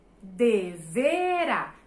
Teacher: são três sílabas mas a sílaba tônica está na última posição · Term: oxítona